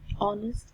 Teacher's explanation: here the initial consonant of H is not pronounced